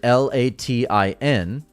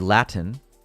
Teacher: if I was to say the word Latin, I don't pronounce the T. Whereas in the UK, someone might say Latin.